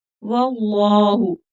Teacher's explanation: اللہ کا لام موٹا پڑا جائے گا کیونکہ پچھلے حرف پر زبر ہے اور تھوڑا کھینچ کر پڑھیں گے، اوپر کھڑی زبر ہے.